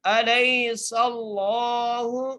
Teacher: سین کے اوپر زبر ہے، اس لیے لفظ اللہ موٹا کر کے پڑھیں گے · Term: لفظ اللہ کا لام